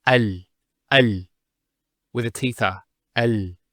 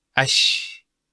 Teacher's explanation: The actual points of articulation of the lam and the sheen are very close to each other. And because they're very close, what happens is this lam is not pronounced.